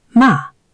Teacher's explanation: And fourth tone, sharp falling. Ma, that's to scold.